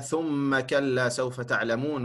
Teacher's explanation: En bij een mim met een shadda hoort altijd een ghunna. Daar is geen uitzondering bij.